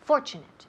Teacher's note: Y el énfasis en la primera sílaba